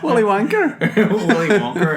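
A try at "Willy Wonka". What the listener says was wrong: stop pronouncing the R in Wonker.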